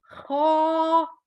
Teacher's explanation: ये हलक के पहले हिस्से से निकलेगा, खो, बस इससे ज्यादा इसकी मिकदार नहीं करनी।